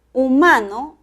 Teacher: el acento prosódico está en la sílaba ma en la segunda